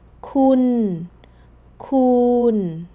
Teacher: The tone is the same. Both sit flat and level on the mid tone. So, the tone gives you nothing to hold on to here.